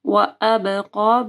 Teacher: با کے اوپر کلکلا ہوگا اور قاف کو موٹا پڑھنا ہے